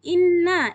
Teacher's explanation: Kemudian inna di sini nunnya bertasydid, menandakan hukum bacaannya di sini adalah gunnah, berdengun 2 harokat. Ya, kemudian selanjutnya khalaqnakum.